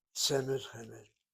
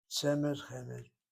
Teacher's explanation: And both words get the accent on the first syllable. Semed, short vowel sego, open syllable, accented.